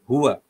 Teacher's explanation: Keluarkan bunyi ha itu daripada dada.